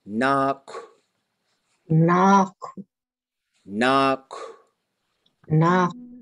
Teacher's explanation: And it's got this little breath of air that comes at the end. That's what that W is doing.